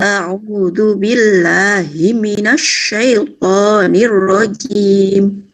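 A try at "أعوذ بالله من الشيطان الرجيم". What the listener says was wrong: Jimnya enggak boleh rojim, ngawas itu ya.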